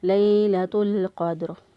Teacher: قاف جو ہے اس کو پر پڑھا، دال پر قلقلہ کیا